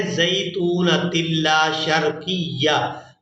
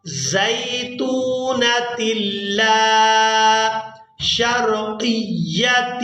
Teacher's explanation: اب یہاں پر جو لوگ مسٹیک کرتے ہیں وہ یہ مسٹیک کرتے ہیں کہ لام کو بغیر کھینچے ادا کر دیتے ہیں زیتونۃ لا شرقیہ. تو یہاں پر ہم نے لام کو الف مدہ کی وجہ سے کھینچ کر ادا کرنا ہے. زیتونۃ لا، لام الف زبر لا، زیتونۃ لا شرقیۃ.